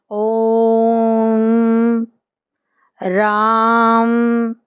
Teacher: तीसरा पढ़ेंगे अगर प्लुत प्लुत स्वर क्या होता है जिन में हस्व स्वर से तिगुना यानी थ्री टाइम्स ज्यादा अथवा तीन इकाइयों के बराबर समय लगे उन्हें प्लुत स्वर कहते हैं इनका प्रयोग दूर से पुकारने में